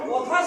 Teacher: ক হচ্ছে অল্পপ্রাণ এবং অঘোষ বর্ণ